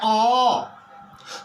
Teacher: जैसे कि हम बोलते हैं अ, तो जब हम अ का उच्चारण करते हैं तो देखते हैं जो नाद से, प्राणवायु से हवा निकल करके सीधे कंठ से बाहर निकल जाती है, कहीं कोई अवरोध नहीं होती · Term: स्वर वर्ण